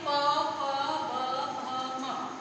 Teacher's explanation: प से म तक बोलते समय ये होठ हमारे आपस में स्पर्श कर रहे हैं, ठीक है, बंद हो रहे हैं, तो इसे हम बोलेंगे ओष्ठ व्यंजन